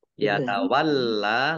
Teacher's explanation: lamnya dibaca dobel ada tasdidnya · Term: lam fathah berdiri